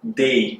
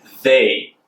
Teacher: Ele tem um som de interdental. Eu coloco a língua entre os dentes e coloco ali o som.